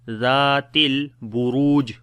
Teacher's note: Ra we read in heavy sound due to dhamma on it, and also we long there is waw madda.